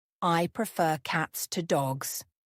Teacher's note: Prefer has stress on the second syllable.